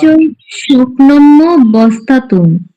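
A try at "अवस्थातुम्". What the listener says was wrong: অবস্থাতুম, ওই জায়গায় ওয়া আসবে। এই যে অন্তর্জ ফলা আছে না, এই যে এই অন্তর্জ ফলার মধ্যে ই অ আছে, এই রস্বইকার, হ্যাঁ, এটা অবস্থাতুম চলে আসবে এখান থেকে, ভেঙলে অবস্থাতুম। হুম, অবস্থাতুম, এখানে নিচে দেওয়া আছে অবস্থা, ঠিক আছে।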